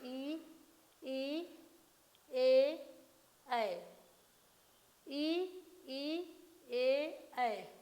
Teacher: जिह्वा का अग्र भाग प्रयोग में लाते हैं ई से और ए, ऐ से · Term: अग्र स्वर